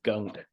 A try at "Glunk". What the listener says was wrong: It's pronounced glunk, not gunk. The L is pronounced. It's not a silent L.